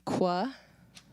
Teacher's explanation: labiovelar means that we have our lips involved, and we also have what is this back of our mouth where the tongue meets the K kind of area. And so basically what we're doing is we're just kind of adding a W to it.